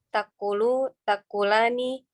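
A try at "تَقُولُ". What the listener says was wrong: Jangan pakai hamzah. Taqulu, taqulani. Yang bikin bingung ada hamzahnya itu. Jangan pakai hamzah.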